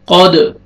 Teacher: آگے دال ساکن ہے، قلقلہ کریں گے، ڈبل ساؤنڈ آئے گا